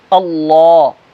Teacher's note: آگے اللہ کے نام کا جو لام ہے اس کو موٹا کرنا ہے، یعنی لفظ جلالہ کا، اللہ۔